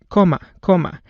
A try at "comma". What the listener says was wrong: Comma, comma. That should be pronounced with the vowel short O, comma, comma. And he's pronouncing it more like a long O, coma, coma.